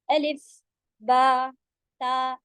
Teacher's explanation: अलीफ भी नहीं कहना है, लीफ बड़ा नहीं होगा